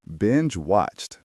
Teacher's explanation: It is a soft t sound at the end.